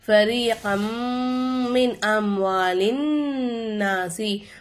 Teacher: ஒரு எழுத்தை இன்னொரு எழுத்தோட ஜாயின் பண்ணி குன்னா செஞ்சு ஓதணும். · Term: இதகம் பில்குன்னா